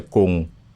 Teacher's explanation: The tongue kind of makes its way to the palate, and then it doesn't fully make it.